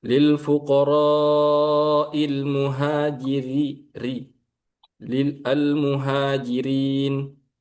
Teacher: Ro yang berharakat kasroh itu dibaca tipis.